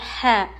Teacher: ح حلق کے بیچ کے حصے سے ح ادا ہوتا ہے. ح پر زبر ہے نہیں کھینچیں گے.